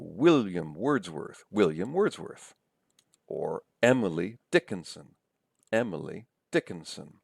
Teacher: Stresses on the first syllables, I think, in both of those cases